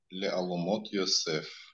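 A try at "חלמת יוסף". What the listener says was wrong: Алумат. В данном случае алумат. Нет, тут вава нет, то есть это единственное. Алумат Йосеф, да. Алумат, окей. Йосеф.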